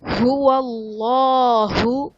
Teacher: هو اللہ، اس میں جلالت اللہ عز و جل کے لام سے پہلے زبر ہے تو یہاں پر لام کو پر پڑھا جائے گا، یعنی موٹا کر کے پڑھا جائے گا